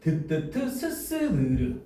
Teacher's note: 잇몸 소리. 자, 혀끝과 윗잇몸이 키워드야. 윗잇몸이 닿아서 나는 소리래.